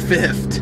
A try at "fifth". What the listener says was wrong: Not fifth. It's not F-I-F-T. It's F-I-F-T-H.